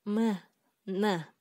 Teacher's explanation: Үчүнчү мурунчулдар. Өпкөдөн чыгып келе жаткан аба мурун көңдөйү аркылуу сыртка чыгат. Ошол себептен аны биз мурунчулдар деп атайбыз.